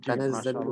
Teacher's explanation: তানাজ্জালুল এখানে ৪ আলিফ টান হবে